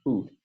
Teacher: the voiced labial stop at the beginning of boot